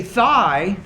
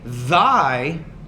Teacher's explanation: if I say thigh, there's no vibration here in the vocal folds in my throat when I say it. Thigh. Now if I say thy, there is vibration here in the vocal folds. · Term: interdental consonant